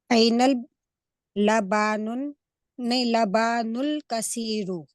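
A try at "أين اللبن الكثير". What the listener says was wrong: हाँ, ये बा के ऊपर सिर्फ फतहा लगाएं, अलिफ नहीं लगाएं। ऐनल लबनुल कसीरू। नहीं, बा पे जबर होगा, लेकिन जबर के साथ अलिफ नहीं होगा, सिर्फ जबर। ऐनल लबनुल कसीरू। आप लबानुल कह रही हैं।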